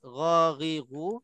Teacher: tempat keluarnya di hujung halqum. Lidah tak main peranan langsung. Di tempat keluarnya di tengah-tengah, di hujung halqum, maknanya bahagian halqum yang bergeraknya ataupun yang bekerjanya untuk nak keluarkan huruf ghariru. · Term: huruf ghain